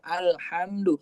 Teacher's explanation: Berarti masuk tuh alif lam qamariyah, dibaca jelas lamnya alhamdu.